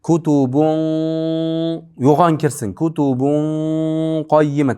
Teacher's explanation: Tanvinni qof tishiga kirgizamiz. Yo'g'on dimoq bilan.